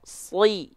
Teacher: baca aja seperti huruf sin tapi pangkal lidahnya diangkat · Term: Shod kasroh